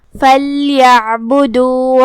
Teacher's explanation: کلمت فَلْيَعْبُدُوا میں یہاں لام پہ جزم ہے، ہم لام کو ظاہر کریں گے اور اسے جزم سے ادا کریں گے